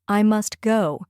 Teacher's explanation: The t disappears completely. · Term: sound dropping